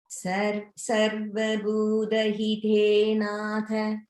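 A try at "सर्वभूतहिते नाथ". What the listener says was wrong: Good. And I heard the Bhu Mahaprana clearly. So Bhu in Bhuta is Mahaprana.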